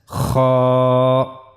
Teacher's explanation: We have to use the upper part of our throat to pronounce kha.